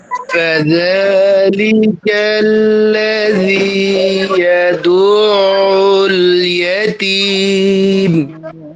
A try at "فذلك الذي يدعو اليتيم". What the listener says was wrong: আপনার জালটাকে আরো পাতলা করেন ঠিক আছে মাশাআল্লাহ অন্য অক্ষরগুলো ঠিক আছে জালটা মনে হয় একটু বিষাক্ত হয়ে যায় আরো পাতলা করার চেষ্টা করেন